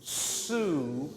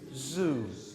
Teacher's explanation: The noise you hear with the zed, which you don't hear with the S, is the vocal cords vibrating. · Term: voiced